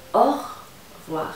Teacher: Si quieres saltarte la E, te la puedes comer perfectamente.